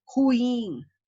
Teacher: a sílaba tônica é o in, que ela é uma palavra oxítona